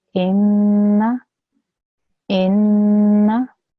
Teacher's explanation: The n sound, you could hear that for 2 seconds. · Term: ghunna sound